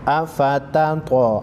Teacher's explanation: त्वा हुरूफ़ मुस्तालिया में से है और हुरूफ़ क़लक़ला में से है। मोटा पढ़ेंगे और हिला कर पढ़ेंगे।